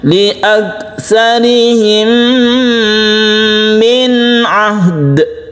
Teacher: Sukun nun bertemu dengan ain kita namakan izhar halqi. Kita baca izhar terang, jelas dan tidak berdengung.